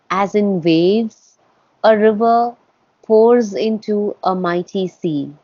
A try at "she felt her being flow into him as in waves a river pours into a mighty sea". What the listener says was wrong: Almost perfect. The only thing you missed was you broke up, she felt her being. And it should be, she felt her being flow